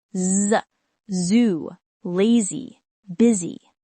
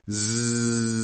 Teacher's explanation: Z is voiced, your throat vibrates.